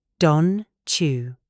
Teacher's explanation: In British English, T + Y usually becomes a ch sound. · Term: Assimilation